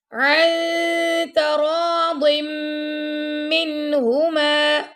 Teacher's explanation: ضاد کو موٹا پڑھ رہے ہیں اور میم پہ میں نے غنہ کیا